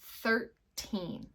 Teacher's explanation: We really want a strong sound of the N at the end of that number.